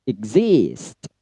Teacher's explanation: untuk exist itu pada zis-nya yang di stressing ya. Kalau ik-nya dia rendah. Jadi cara bacanya adalah exist.